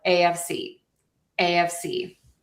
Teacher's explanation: we are going to stress the C here, the AFC. We do have slight secondary stress on the A. So, it's a little more like AFC.